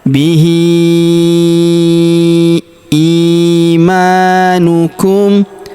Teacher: Huruf i kita panjangkan dua harakat karena ya sukun di depannya. Ima huruf ma kita panjangkan dua harakat karena alif kecil di depannya yang ini.